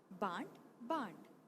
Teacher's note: अनुनासिक स्वर, इन स्वरों के उच्चारण में ध्वनि मुख के साथ साथ नासिका द्वार से भी बाहर निकलती है। अतः अनुनासिकता को प्रकट करने के लिए शिरोरेखा के ऊपर चंद्र बिंदु का प्रयोग किया जाता है।